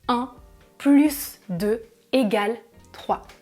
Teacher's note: Je prononce le S du mot plus. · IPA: [plys]